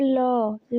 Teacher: ल पार्श्व व्यंजन है जिसके उच्चारण में हवा जीभ के पार्श्व यानी बगल में निकल जाए। जैसे ल जब आप बोलिए तो वो पार्श्विक होगा, पार्श्विक व्यंजन।